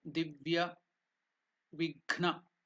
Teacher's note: The Gha is the second one, Mahaprana, not the Ga.